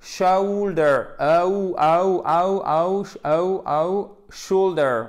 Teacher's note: C'est pas chou ou. C'est une diphtongue. C'est un E qui tire vers le ou.